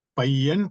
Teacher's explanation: இப்ப பையன்னா நெடில் ஏன்னா ஐயன்னா ஐகாரம் நெடில் தானே பையன்னா நெடில் ஆனால் மொழி முதலில் வருகின்ற பொழுது இந்த பையன்னா தன்னுடைய இரண்டு மாத்திரையில் குறுகி ஒரு மாத்திரையாக வரும் அப்ப பையன்னா இந்த இடத்திலே குறில் போன்று வரும் பையன் என்று இந்த மொழி